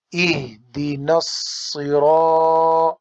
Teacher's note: صاد کو موٹا کریں گے، موٹی آواز ہے، حروف مستعلیہ میں سے ہے